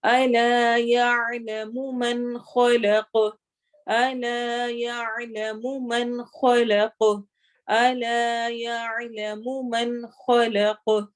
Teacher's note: یہاں پہ دھیان رکھنا ہے کہ الا لمبا ہو اور یعلمو لمبا نہ ہو